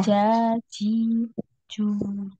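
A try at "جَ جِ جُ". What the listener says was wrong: Coba Ukti, Afwan, diletakkan ujung lidahnya di gigi bawah, ya, ujung lidahnya. Jadi yang naik itu tengah lidah ke langit-langit, ya. Ja, sampai nempel ya, tengah lidahnya itu sampai nempel di langit-langit. Nah, jadi langit-langitnya itu bagian yang dalam itu ya, ya. Jadi tidak ada suara desisnya.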